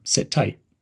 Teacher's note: link the words sit and tight it's almost like one word